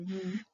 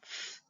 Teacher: teeth on the bottom lip and they're both long sounds but they differ by whether the voice is turned on in V or off in F · they differ by whether the voice is turned on in v or off in f. We call these sounds voiced or voiceless sounds, depending on whether the vocal cords are moving.